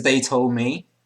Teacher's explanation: when she says told me, she doesn't pronounce the D that much